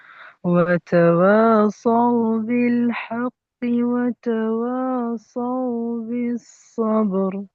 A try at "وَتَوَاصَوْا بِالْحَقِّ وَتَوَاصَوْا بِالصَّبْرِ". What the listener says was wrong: আচ্ছা দেখেন ভাই, এখানে এই যে খাড়া জামার গুলো একটু টান হয়নি, খাড়া জামাগুলো একটু ভালোভাবে টান দেবেন যাতে বুঝতে পারা যায়।